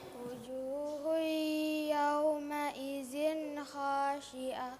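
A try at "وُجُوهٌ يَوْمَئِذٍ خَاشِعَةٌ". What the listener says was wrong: Idzin kha. N-nya jelas. Wujuhu yawma idzin kha.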